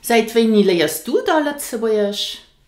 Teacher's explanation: did you hear that I pronounced the word dann, da?